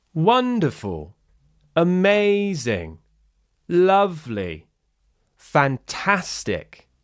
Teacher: Notice how the tone shift is its strongest on the stressed syllable. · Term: rise fall